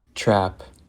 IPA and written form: tɹæp (trap)